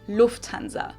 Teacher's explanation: In English, people usually say Lufthansa, but in German, we say Lufthansa. So the emphasis is on the first syllable